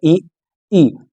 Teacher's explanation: इसमें मुख द्वार हमारा लगभग बंद है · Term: समृत स्वर